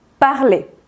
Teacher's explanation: cuando el verbo del primer grupo está al infinitivo, es decir, sin conjugar, no se pronuncia la R del final